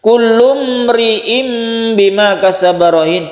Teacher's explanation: Kullum ri'im bima kasabarahin, kullum ri'im mem bertemu dengan ro idhar syafawi, ada tanwin bertemu dengan ba iklab. Iklab ini adalah membalik menjadi mem, makanya ditulis mem kecil di sini.